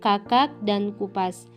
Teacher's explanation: huruf K yang bercirikan mati, oral, velar, dan plosif